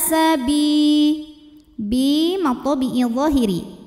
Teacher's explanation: karena ada Ya Sukun sebelumnya baris kasrah maka huruf ba panjang dua harakat